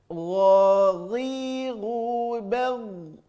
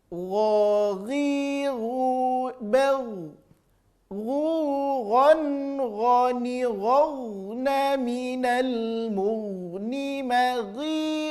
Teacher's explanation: Huruf gha sama rasa, ya. Terasa di ujung tenggorokan keluarnya, tapi lebih lembut saja bunyinya daripada huruf kha.